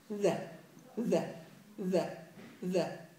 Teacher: طرف اللسان مع ما يحاذيه من اطراف الثنايا العليا، وبدك تجيب فيه جهر وبدك تجيب فيه رخاوه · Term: الذال